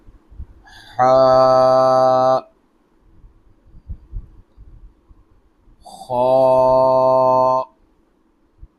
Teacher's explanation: H comes from middle of the throat like Uh h this one is heavy letter.